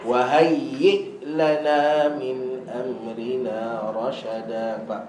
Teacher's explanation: Hamzah ni ada sifat khusus bagi dia. Dia panggil syiddah. Syiddah ni macam kita bawa kereta, depan ada tembok.